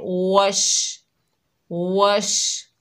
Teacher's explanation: शीन जब अदा करेंगे तो शीन की आवाज़ फैलती हुई महसूस होगी, जैसे वश वश।